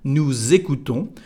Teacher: The liaison is like the letter Z, Z here. Nous écoutons.